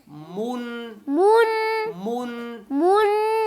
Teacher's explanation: پیش کی آواز ناک میں نہ جائے, صرف غنہ آنی کی آواز ناک میں جائے.